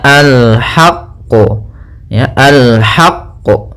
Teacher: Ya, kita tekan qafnya baru kita pantulkan.